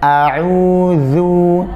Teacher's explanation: Karena kalau dia tebal, dia menjadi dha. Karena zal dengan dha makhrajnya sama, ya, berada di ujung lidah bertemu dengan pangkal gigi, ujung gigi seri bagian atas. Hanya berbeda di sebagian sifatnya. · Intinya jangan sampai zal itu terdengar tebal.